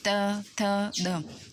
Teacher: तो दांतों को स्पर्श करके त थ द, तो ऐसे वर्ण जो दांत को स्पर्श करके मतलब हमारे मुख से बाहर आते हैं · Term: दंत्य